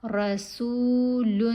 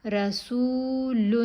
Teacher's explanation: سین کے اوپر پیش ہے، ساتھ واو ساکن ہے، حرف مدہ ہے، 1 الف کے برابر لمبا کریں گے۔